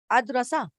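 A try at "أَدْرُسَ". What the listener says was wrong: را پہ ہے ضمہ، وہ ضمہ تو اپنا رہے گا اد روسا.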